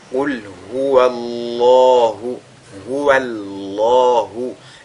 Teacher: Et donc, on a affaire ici à un cas de at-tafkhim, dont le lam du mot Allah est donc lu avec agrandissement